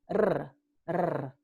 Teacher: Y en la múltiple, esta consonante aquí, esta vibrante se llama múltiple porque, well, hay múltiples golpes. So there are multiple taps against the alveolos.